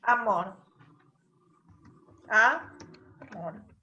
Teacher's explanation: en amor acentúa en la última sílaba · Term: agudas